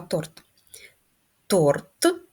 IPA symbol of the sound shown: т